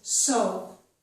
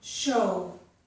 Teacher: with the s sound, we don't round our lips, but with the sh sound we do.